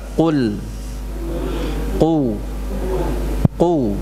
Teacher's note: perlu kita melatih sifat isti'la ya pada huruf qaf ini ya, tebal